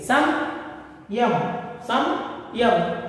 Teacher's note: उदाहरण के लिए संयम, संयम में या आया है, या से पहले जो अनुस्वार आया है उसका उच्चारण पा वर्ग का पंचम वर्ण मां का आधा उच्चारण करना चाहिए। देखिए संयम, संयम कहकर पढ़ना चाहिए।